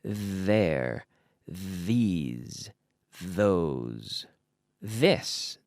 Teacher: sound of the th with the vocal cords activated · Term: th sound